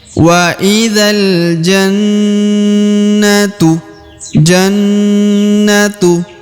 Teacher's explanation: Ya ditahan ditekan dan didengungkan kurang lebih dua harakat